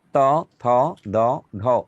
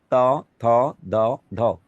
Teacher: যে ধ্বনি উচ্চারণের সময় আমাদের জিহ্বা দাঁতকে স্পর্শ করে তাকে বলে দন্তবর্ণ।